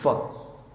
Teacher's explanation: फ में ऊपर के दांत और नीचे के होठ को मिलाना होता है